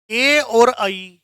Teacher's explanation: ए और आई, इनका उच्चारण स्थान है कंठ तालु